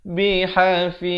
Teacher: ha pedas. Ha di tengah kerompong.